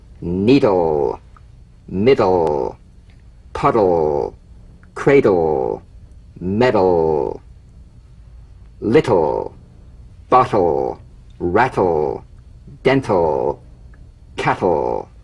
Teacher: Feel the typical drum beat damped in the tip of the tongue as the D or T click slides quickly into the L. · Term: DL and TL